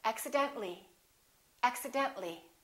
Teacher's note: we don't pronounce the a we say accidentally